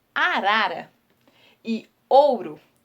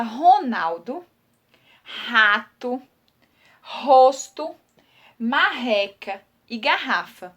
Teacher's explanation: O som de R, por exemplo, na palavra arara e ouro, vocês percebem um som um pouco mais fraco.